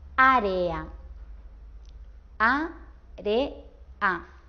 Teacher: Un hiato también es cuando tenemos dos vocales, pero esta vez estas dos vocales están juntas, pero las pronunciamos separadas. Por ejemplo, si digo área, a-re-a, la e y la a últimas están juntas, pero lo pronunciamos separados, o sea, están en dos sílabas diferentes.